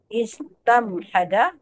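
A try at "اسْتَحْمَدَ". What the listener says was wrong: Nah, terbalik hurufnya. Istahmada.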